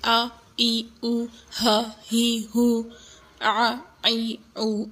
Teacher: ان حرکات کو کھینچا نہیں جاتا، جتنی حرکت ہے بس ایک حرکت جو ہے اس کو اسی طرح پڑھتے ہیں، آ ای او، ہ ہی ہو، آ ای او، اتنا ہی، ان کو لمبا نہیں کیا جاتا۔